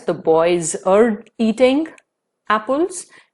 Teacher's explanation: r is followed by the word eating which starts with the vowel sound e therefore r will be pronounced in this case